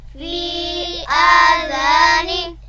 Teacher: یا مدہ کے اوپر چھوٹی مد ہے جس کی آواز 3 الف کے برابر ہے